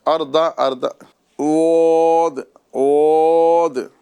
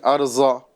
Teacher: زبان کی یہ کروٹ اوپر کے داڑوں کی جڑ میں لگے گی اور وہاں سے ہم حرفیں واد ادا کرتے ہیں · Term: حرف واد